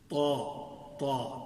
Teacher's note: ہونٹ حرکت نہیں کریں گے، توا نہیں پڑھیں گے